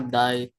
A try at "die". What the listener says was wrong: bacanya di, bukan dai. Di, ya.